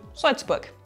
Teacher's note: Das L wird oft zu einem Vokal oder Diphthong. Das ist ein Doppellaut.